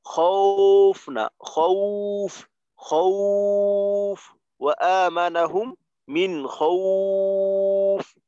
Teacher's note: ওয়াওয়ের উচ্চারণটা হয় হ্রস্ব উ যেহেতু টানতে হয় তো দীর্ঘ উ বলতে পারেন, দীর্ঘ উ এর মতো হয়।